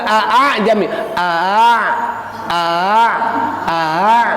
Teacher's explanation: dibaca antara bunyi hamzah dan alif